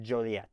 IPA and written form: ˈdʒoʊliɛt (Joliet)